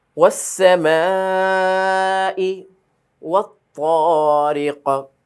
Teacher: শেষে কিন্তু অবশ্যই কলকলা হরফ। সামা এর মধ্যে 4 আলিফ টান।